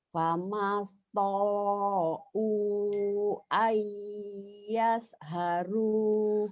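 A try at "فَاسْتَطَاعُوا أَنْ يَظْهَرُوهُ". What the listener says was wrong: bukan ayas haru, bukan s tapi zo ayaz zo zho, lebih dekat ke z daripada ke s, tapi z-nya zho ayaz haru.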